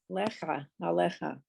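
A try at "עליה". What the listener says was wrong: Aleha. Aleha. It just ends in a hey, but very nice.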